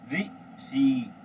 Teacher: हमारी जो जो टंग है वो ऊपर जाती है, और तालु से लगने से पहले एक एयर निकलती है बाहर, ठीक है, तो यानी ऊपर टच हुई, तो ऋषि, ठीक है। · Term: मूर्धन्य